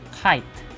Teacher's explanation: It comes out with a puff of air in the word kite, but not in the word sky.